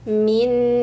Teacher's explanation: nun sukun ketemu nun. Idghamkan nun sukunnya. Langsung baca nun tasdid.